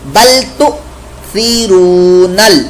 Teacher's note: یہ حمزہ ساکن ہونے کی وجہ سے یہاں پر جھٹکا پیدا ہو رہا ہے